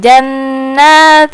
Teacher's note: tanwin bertemu dengan huruf ta jadi bacanya samar-samar